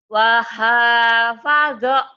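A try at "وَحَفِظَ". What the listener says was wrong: Fa bukan wa. Fa. Fa.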